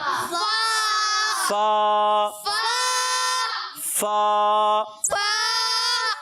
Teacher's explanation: اس کی ادائیگی ہوتی ہے اوپر والے دانتوں کے کنارے. جب نیچے والے ہونٹ کے تر والے حصے سے لگتا ہے تو ادا ہوتا ہے فا.